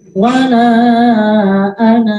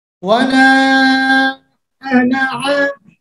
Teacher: Kalau dalam keadaan berhenti, dia menjadi panjang. Sedangkan kalau dalam keadaan wasal lanjut, maka dia menjadi pendek.